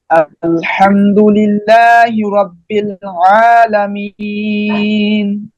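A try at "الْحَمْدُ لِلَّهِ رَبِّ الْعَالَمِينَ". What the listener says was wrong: আরেকটু, হ্যাঁ, পৌনে তিন আলিফ হয়েছে, সামান্য আরেকটু দিতে হবে আবার।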